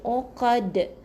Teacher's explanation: Dia ada lantunan yang sedikit nyaring sebab lantunan ni kita di hujung perkataan kita nak wakafkan. Jadi kena ada detakan yang tinggi.